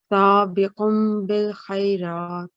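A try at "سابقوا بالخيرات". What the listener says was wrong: Yes, much better. So, you know, this was just, you read it very quickly before, but now you've recited very well.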